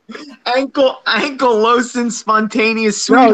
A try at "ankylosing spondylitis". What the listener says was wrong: No, not spontaneous. Spondylitis. spondylitis. Ankylosing spondylitis.